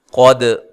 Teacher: قاف کو موٹا ادا کرنا ہے، دال کو ہلانا ہے، دال کو ہلا کر پڑھنا ہے، قلقلہ کرنا ہے